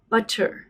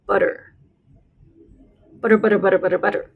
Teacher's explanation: British English, a double T is pronounced more like t on the tip of your tongue, butter. But in American English, we pronounce it a little farther back in our mouths, butter.